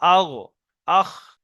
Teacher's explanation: তৃতীয় মাখরাজ হল গনখ হালাক বা কন্ঠনাল শেষ ভাগতে উচ্চারণ হয় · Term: গইন খ